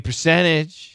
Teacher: percentage knocks out the T